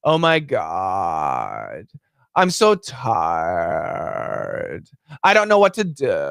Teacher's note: That type of voice is called vocal fry.